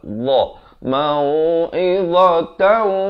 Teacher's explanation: Dha. Di hujung lidah itu keluar.